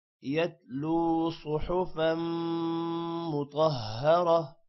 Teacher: غنہ ہوگا، طا بھی موٹا ہوگا، را بھی موٹا ہوگا اور تا جو ہے تا دو زبر تن ہے، وقف کی وجہ سے یہ ہا بن جائے گا